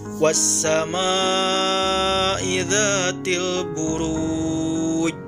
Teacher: huruf Jim di akhir ayat tersebut disukunkan dan dibaca memantul dengan berat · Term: qolqolah kubro, qalqalah kubra